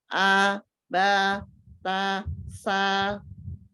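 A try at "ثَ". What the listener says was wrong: Hanya perbaikan sedikit di huruf sa. Ujung lidahnya ada di ujung gigi sari atas, tidak menempel lama. Tidak menempel lama. Nempel lepas. Supaya tidak ada desisnya, tidak ada s-nya. Ya, tidak ada as-safir.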